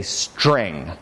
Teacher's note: not every English speaker allows T here I don't for instance instead of ta I say cha · So for some, the ta gets pronounced as an affricate, cha, instead.